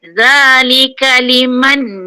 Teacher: Za nipis, keluar lidah. Zalika liman, nipis.